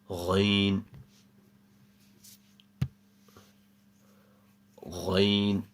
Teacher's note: Ghain comes from the top of the throat, similar to a word that we've done before as well, which was Kha.